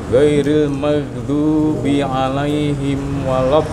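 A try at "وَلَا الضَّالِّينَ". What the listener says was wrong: Baik, apa masih agak ke depan ya, tekanannya di waladdall. Samakan ketika walad coba Pak. Bibirnya jangan ditutup Pak. Waladdallin.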